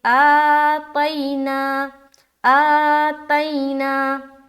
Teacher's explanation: तई या साकिन और उससे पहले ज़बर आ गया तो ये हो गए या लीन। नरमी के साथ जल्द अदा करेंगे, आतैना आतैना, ना को भी खींच दिया एक अलिफ के बराबर क्योंकि खड़ा ज़बर है।